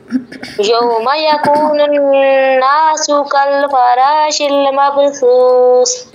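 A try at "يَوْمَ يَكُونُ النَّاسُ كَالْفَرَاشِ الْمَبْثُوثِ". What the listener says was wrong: शिल लाम के ऊपर कलकला नहीं होगा। कल फ़रा एक तो रा पूर पढ़ना है और शिल मबसूस।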